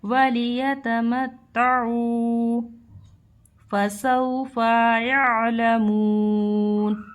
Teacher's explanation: یہاں دیکھیے یہاں پر بھی ہمارا واو ساکین ہے، اس سے پہلے حرف پر جبر ہے لیکن ان دونوں کے قاعدے الگ الگ ہیں۔ واو ساکین سے پہلے حرف پر جب جبر ہوتا ہے تو ہمارا یہاں واو لین ہوتا ہے، اس کو ہم بالکل بھی نہیں کھینچتے اور نرمی کے ساتھ ادا کرتے ہیں۔ یا عین زبر یا، لام زبر لام، میم واو پیش مو، نون زبر نا، یعلمون۔